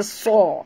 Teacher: Tebal ya, huruf suat ni jangan baca sa tapi baca so. Kerana suat termasuk dalam huruf isti'la ya.